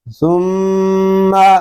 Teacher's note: میم شدد ہے، اس کو غننے کے ساتھ پڑھیں گے. اس میں شروع ہی سے غنہ کریں گے کیونکہ میم شدد میں ہمیشہ غنہ ہوتا ہے.